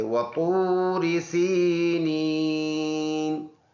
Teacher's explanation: واو دونوں ہونٹوں کو گول کرنے سے ادا ہوتا ہے۔ تو موٹا حرف ہے، اوپر کے پڑھیں گے، واو مدہ ہے، واو ساکن سے پہلے پیش ہو تو واو مدہ ہوتا ہے۔